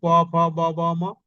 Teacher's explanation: অর্থাৎ ধ্বনির উচ্চারণে ঠোটের অষ্ঠের সঙ্গে অধরের স্পর্শ ঘটে। প মানে দুইটা পাঠ উপরেরটা নিচেরটার টাচ লাগে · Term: অষ্টধ্বনি